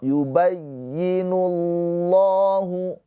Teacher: lafaz Allah ini dibaca dengan tafkhim tebal karena sebelumnya berharakat dhammah ya.